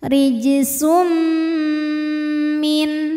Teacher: hukum namanya Idam bunah karena ada tanwin dah menghadapi mim maka tanwin masuk ke mim disertai dengungan tahan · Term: idgham bi gunnah